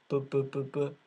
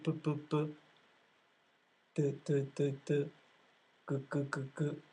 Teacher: you should be able to feel vibration because they are voiced and they're light. There's no aspiration or puff of air. There's no p b b b b, d d d d, g g g g, g g g g.